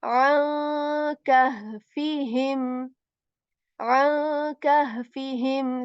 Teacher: we are going to hide the voice of noon here